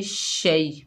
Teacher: फ़अज़ल्लहु, मीम को शीन के साथ मिलाकर पढ़ेंगे, शीन के साथ मिलाकर पढ़ेंगे फ़अज़ल्लहुम। शीन के ऊपर ज़बर है, आगे या साकिन है, शीन को या से मिलाकर पढ़ेंगे शै। या साकिन है, ये यालीन है, इसे नरमी और जल्दी से अदा करेंगे।